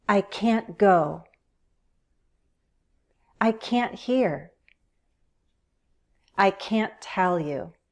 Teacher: Let's stress the negative form.